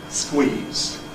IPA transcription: skwiːz